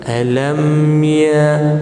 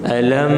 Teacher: Tapi kalau dia tak dengung, dia berjelaskan alam ya, dia tak dengung tuan-tuan, dia mati sahaja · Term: mim sakinah